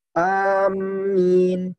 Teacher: Dan yang cara yang keempat dengan ditasydid mimnya bersamaan dengan mat, yakni cara bacanya amin ya, ditasydid mimnya.